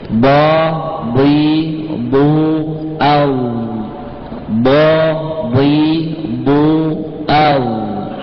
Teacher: Makhrajnya adalah tepi lidah di gigi geraham.